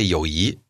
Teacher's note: notice that it becomes second tone